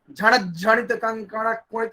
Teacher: ण जो है वो तो ह्रस्व था, लेकिन आगे जो ज झ संयुक्त है इस कारण से ण पर स्ट्रेस देना पड़ा, तो ण यहाँ पर हो गया गुरु हो गया, लघु होते हुए भी गुरु हो गया।